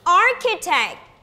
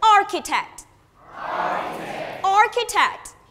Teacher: the stress should be on the first syllable